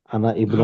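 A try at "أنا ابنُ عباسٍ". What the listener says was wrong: बेटा, अना को मिला के पढ़िए उसमें। नहीं इब्न को, अना को इब्न में मिला देना, अलिफ नहीं पढ़ना बीच का।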